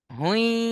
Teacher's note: এখানে তানবিনকে ইয়ার সাথে মিলিয়ে একালিফ গুন্না করে পড়তে হবে। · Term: ইদগামে নাকিস